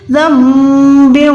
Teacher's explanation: زن نہیں پڑھ سکتے، ہم اس کو پڑھنا ہے زم بیو. با کو واو کے ساتھ ملائیں گے اور یہاں پر گنہ کریں گے، ٹھیک ہے. واو پہ تشدید ہے تو یہاں پر با کو واو کے ساتھ ملائیں گے.